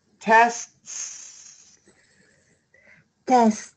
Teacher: make that second s always long